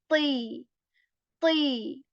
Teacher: we will also raise the back part of our tongue to make it sound heavy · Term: heavy letter